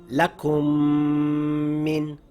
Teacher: i closed my lips the m sound came through the nasal passage and i held it for two counts · the two Meems will merge together and the sound is made entirely by the nose through the nasal passage, holding it for 2 counts, keeping your lips closed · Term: meme idram, idgham with ghunna